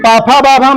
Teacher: देखो ओठ जुड़ जाता है, इसलिए इसको कहते हैं ओष्ठ